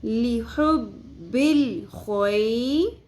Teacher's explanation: خو زبر یا ساکن حرف لین نرمی سے پڑھیں گے. خوئی، خو کو پر پڑھیں گے اور خو میں خراش کی آواز کلیئر ہونی چاہیے گلے کے اندر